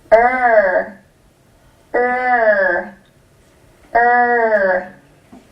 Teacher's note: my tongue goes back and up and gets tight so I can make the IR sound